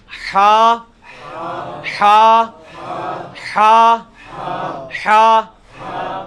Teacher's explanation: یہ حلق میں سے نکالنا ہے